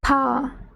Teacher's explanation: Це можна відчути, приклавши долоню до рота і сказавши, наприклад, слово па, ви відчуєте такий легкий теплий подих на долоні. Це і є придих.